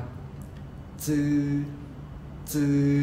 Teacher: จะเป็นกลุ่มเสียงพยัญชนะปลายลิ้นแตะฟันบนด้านในนะครับคือเอาปลายลิ้นไปแตะที่ฟันครับฟันด้านในฟันบนนะครับซึ่งจะมีด้วยกัน3เสียงนะครับเสียงแรกคือเสียงจื้อจื้อจะใช้ตัวอักษรโรมันตัว▁Z▁นะครับแต่ จะออกเสียงเหมือนกับเสียงพยัญชนะจอจานในภาษาไทยนะครับเพียงแต่ว่าเอาปลายลิ้นไปแตะฟันบนด้านในนะครับ